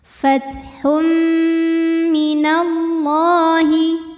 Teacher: Kemudian ada hukum idgham bi gunnah. Karena ada tanwin dhammah yang menghadapi huruf mim, maka bunyi tanwinnya dimasukkan ke mim. Fathum m, dan bunyi m-nya ini tahan sampai ada suara masuk hidung.